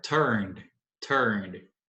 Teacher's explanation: Pulei do som do N para o D. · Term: som de D